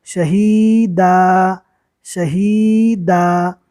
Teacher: 2 زبر رکنے کی حالت میں الف مدہ بن جائے گا